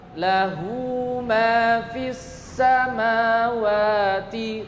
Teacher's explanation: Mad, silah, sughra dibaca 2 harokat.